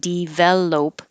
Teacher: it changes to uh in the unstressed syllables like develop so that's when you would use the upside down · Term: schwa